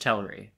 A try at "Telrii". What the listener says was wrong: Telrii? There's two vowels. You gotta pronounce both.